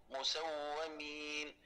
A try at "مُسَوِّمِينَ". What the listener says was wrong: شدد الواو شوي، شدد الواو شوي. مسومين، مسومين.